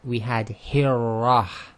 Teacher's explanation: the Ra is pronounced by taking literally the underneath of the very tip of your tongue and touching it to the front hard palate in your mouth. And this takes a lot of practice because you've literally got to curl the tip of your tongue upwards, and this is not what you normally do in English, so it's quite a difficult thing to master. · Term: heavy Ra